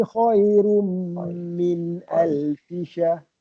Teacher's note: Khairum, dengungkan dia, min tu jelas